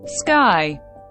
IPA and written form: skaɪ (Sky)